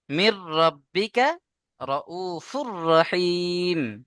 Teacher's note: এখানে যেমন নুন সাকিনকে র এর সাথে আমরা মিলিয়ে দিলাম, ওই রকম এখানে তানবিনকে র এর সাথে মিলিয়ে দিয়ে বিনা গুণনায় পড়তে হবে, কোনো গুণনা টোটালি নাকে যাবে না আওয়াজ।